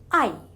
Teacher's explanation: through closed glottic passes out from the mouth without any obstruction the lips are unrounded and the position of the tongue is high